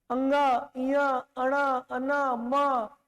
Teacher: इनके उच्चारण में जो श्वास है मुख के साथ साथ नाक से भी निकल रहा है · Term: अनुनासिक